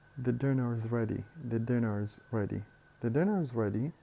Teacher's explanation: The verb to be here, the auxiliary is pronounced as a single syllable, just as ze, and we add it to the previous syllable of the word dinner